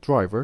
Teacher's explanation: Drive, one syllable, driver, two syllables. But the stress in the word driver is kept on the first syllable, the stem, the original word, not the addition, not the suffix